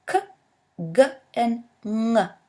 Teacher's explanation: As we continue further into the vocal tract, the next place of articulation in English is velum. The tongue comes in contact with a soft palate, allowing us to produce the sounds k, g, and ng as at the end of ring. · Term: velar